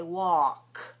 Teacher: in this pattern a l k the L is silent don't pronounce the L at all so we don't say w we say walk w a walk